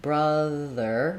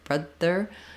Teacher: if the air stops and gets blocked brother brother it's gonna sound too close to your D sound